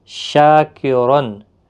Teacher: شاکرن، شا الف مدہ ہے، ایک الف کی مقدار کے برابر کھینچیں گے، اور دو زبر کی وجہ سے را پر پڑا جائے گا۔ شاکرن، تنوین کے بعد حمزہ عین آیا ہے تو گویا کہ یہاں پر اظہار ہلکی ہوگا، گنہ نہیں کریں گے۔